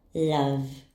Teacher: Doesn't our throat vibrate when we pronounce v? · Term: voice sounds